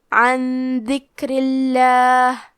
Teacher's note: حرف را کے نیچے زیر ہے تو ہم را کو پتلی آواز میں پڑھیں گے